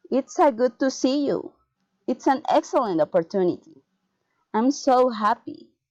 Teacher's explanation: Exclamatory sentence, falling intonation.